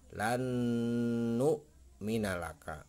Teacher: kalimat Hai lannou ya lannou Minal aka berjalan nu-mi nalaka nah nun mati ketemu dengan huruf Idgham Bighunnah di depannya maka ini akan dibaca dengung